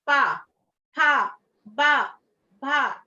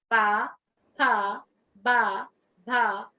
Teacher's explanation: यहाँ पर आप देखिए आपका ओठ जो है लग रहे हैं एक दूसरे के साथ, पा, फा, बा, भा।